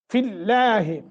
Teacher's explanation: لفظ اللہ جو ہے باریک ہوگا، کیوں؟ ما قبل کسرہ ہے